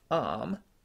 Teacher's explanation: In my accent, that would usually be said as arm, using the start vowel.